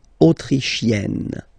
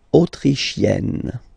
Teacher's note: So same thing here. You get E and then double N. You open the E.